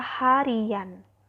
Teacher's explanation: akan muncul bunyi Y, yang dalam ortografi tidak dituliskan, tetapi dalam ucapan dituliskan atau terdengar. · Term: pemunculan fonem